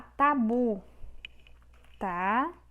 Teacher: A sílaba tônica é a sílaba bu, ou seja, a última sílaba. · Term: oxítona